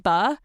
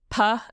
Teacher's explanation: So, like, puh and buh, everything is the same, except with buh, that B sound, your voice is on, so your vocal cords are coming together. Whereas with p, it's just air. Okay. Yeah, your voice is off.